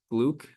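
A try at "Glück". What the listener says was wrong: It's glick. G-L-I. It's pronounced with an I instead of a U.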